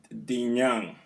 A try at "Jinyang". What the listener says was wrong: Jinyang, not D. Not D. J.